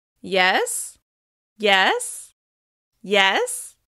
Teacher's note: Using rising intonation with yes signals that you're listening and encourages the other person to continue talking.